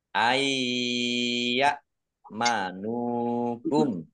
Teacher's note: huruf ya idgham bighhunah masuk dengan mendengung masuk ke huruf ya nunnya tidak dibaca langsung masuk ke huruf ya dan dibaca mendengung mendengung ya agar tampak mendengung maka ditahan ditahan kurang lebih dua · Mendengung ya. Agar tampak mendengung maka ditahan. Ditahan kurang lebih 2 harokat. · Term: idgham bi gunnah